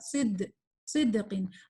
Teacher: دال میں کہیں سے ہمس نہیں ہے, یہ اس کا اپوزٹ ہے, جہر, یہ کلیئر پڑھا جائے گا